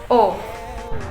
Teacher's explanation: Dikatakan sebagai vokal belakang, bentuk mulut disebut bundar, strukturnya semi terbuka karena saat kita mengucapkan tidak ada mulut bergerak dan terbuka sebagian.